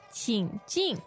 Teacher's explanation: The tones there are third and fourth, right?